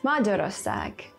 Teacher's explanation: the stress always falls on the first syllable